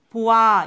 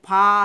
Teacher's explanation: 보아 이건 짧거든요. 근데 봐 하면 길어져요. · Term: 긴 소리